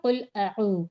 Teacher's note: واو مدہ کو ہم ایک الف کی مقدار کھینچ کر پڑھتے ہیں۔